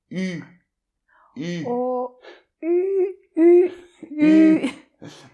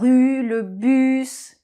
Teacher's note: Vous mettez à nouveau la bouche là, comme le O, comme quand vous faites un O. Et dans cette position, vous essayez de faire le son I, le I qui normalement existe dans toutes les langues, le I de feeling. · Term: lettre U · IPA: [Y]